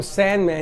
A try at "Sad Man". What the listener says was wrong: Sad without an N. Sad Man.